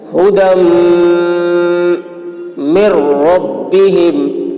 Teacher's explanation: دال کو میم میں ملائیں گے، میم مشدد ہے، میم میں غنہ کریں گے